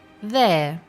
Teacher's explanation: the word there has a silent R, so what you hear is there